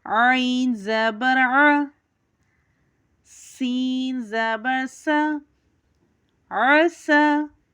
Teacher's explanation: ہم عین کو حرف ہلکی کی طرح ادا کریں گے اور سین کو ہم سختی سیٹی کے ساتھ ادا کریں گے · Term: سیٹی والا حرف